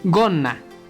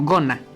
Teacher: hacemos una pequeña pausa por la doble n y se pronuncia como gona